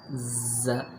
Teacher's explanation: ز یہ تھوڑا سا موٹا ہوگا اور صاد بھی ہے یہ بھی موٹا کر کے پڑھنا ہے، ان میں سختی لے کر آنی ہے